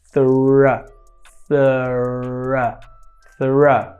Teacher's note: É como se você estivesse fazendo um S, porém com a língua para fora. E depois você tem um R, né, que é um R retroflexo, né, um R que joga para trás.